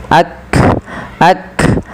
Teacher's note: Makhraj huruf kaf dari pangkal lidah kita. Dan kaf memiliki salah satu sifat yang pertama adalah syiddah. tertahannya suara dan hames dia mengadainya nafas kita.